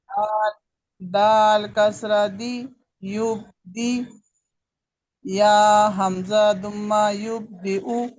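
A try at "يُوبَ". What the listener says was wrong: نہیں، ایک منٹ تھوڑا سا آپ دھوکا کھا گئی ملتے جلتے حروف سے. یہ یا کچھ بھی نہیں ہے، ٹھیک ہے.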